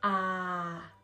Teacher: Thanh huyền. We go slowly down